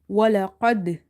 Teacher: Qaf is heavy, dal is having bouncing here, qalqala, and this qalqala is strong now because our word is ending with a qalqala letter and it's having sakoon